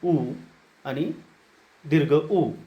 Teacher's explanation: ज्या स्वरांचा उच्चार ओष्ठस्थानापासून होतो त्या स्वरांना ओष्ठस्वर असे म्हणतात